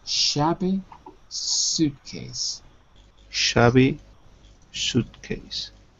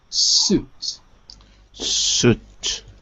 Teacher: you want to say sh but it's s on the second word